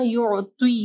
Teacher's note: عین کو واضح پڑھنا، یعطی کا نہیں پڑھنا